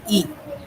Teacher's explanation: जिन स्वरों का उच्चारण तालु की सहायता से होता है उन्हें तालव्य स्वर कहते हैं